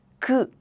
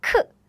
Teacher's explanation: When one of these meets sound, what happens is these sounds change to the aspirated version. This is 그, right? The aspirated version is 크. This is 드, right? But the aspirated version is 트.